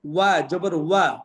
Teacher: ওয়া উচ্চারণ করলে অবশ্যই ঠোঁট গোল করে পড়তে হবে